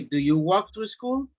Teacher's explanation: Remember, the L is silent.